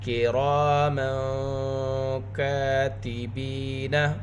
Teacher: را کو پر پڑھیں گے، را کے اوپر زبر، ساتھ الف مدہ۔ را کی آواز کو 2 حرکت کے برابر کھینچ کر پڑھیں گے۔ تنوین کے بعد میم کے اوپر 2 زبر کی تنوین۔